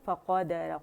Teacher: قاف موٹا ہے، را بھی موٹا ہے، باقی فا اینڈ دال باریکی سے ادا کریں گے